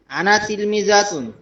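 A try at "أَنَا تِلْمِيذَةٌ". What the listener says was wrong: আন্না তিলমি দাতুন, এখানে টান হবে না, আনা তিলমি দাতুন।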